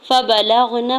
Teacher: लाम की ज़बर को गैन साकिन के साथ मिलाते हुए पढ़ेंगे।